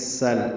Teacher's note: سین باریک صفیر کی آواز سے ادا کریں گے، سل سیٹھی کی آواز سے، لام ساکن پہ اظہار، لام پہ قلقلہ نہ ہو اس لیے اظہار ہے، ہم میں میم ساکن پہ اظہار شفوی ہے اس پہ بھی قلقلہ نہ ہو اور غنہ بھی نہ ہو.